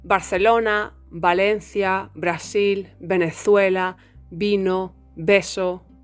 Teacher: in spanish there isn't Any difference between how we pronounce the letter B and the letter V They are both pronounced like a b b so Barcelona Valencia